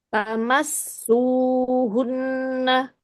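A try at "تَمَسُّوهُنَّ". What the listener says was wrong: Nah, su-nya agak kepanjangan.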